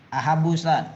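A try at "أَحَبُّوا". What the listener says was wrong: ahabbu, panjangkan. Panjangkan. Ahabbu, diperjelas panjangnya.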